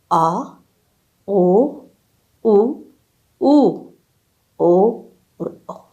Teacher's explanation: तीसरे नंबर पर है पश्य स्वर। इन स्वरों के उच्चारण में जिह्वा मुख के पीछे वाले भाग में रहती है